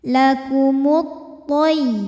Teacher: Karena alif lam menghadapi huruf syamsiyah yaitu huruf to. Maka alif lam tidak kita baca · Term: idgham syamsi